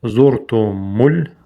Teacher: Обычное за не между зубами.